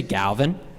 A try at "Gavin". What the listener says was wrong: No, without the L.